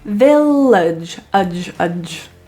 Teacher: It's very quick pronunciation of udge, rather than age as it's spelled. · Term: schwa